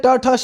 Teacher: तो ट ठ श ये सब मूर्धन्य है, यानी इनका उच्चारण स्थान क्या है? मूर्धा।